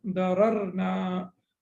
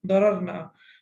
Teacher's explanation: Sorry, na shouldn't be prolonged.